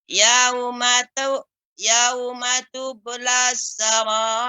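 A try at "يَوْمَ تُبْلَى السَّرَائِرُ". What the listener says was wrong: Ya, baknya ya Ibu, ba yang qalqalah ini dibaca lebih jelas lagi. Yauma tublas ya, tidak tublas terlalu cepat. Tublas ya, diulang kembali.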